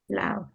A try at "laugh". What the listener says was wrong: It's actually pronounced like F. So if you go back to your rule, here's the F sound. Again, it's about sound, not spelling. Sound, not spelling. Sound, not spelling.